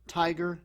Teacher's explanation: it's a two-syllable word but the first syllable is stressed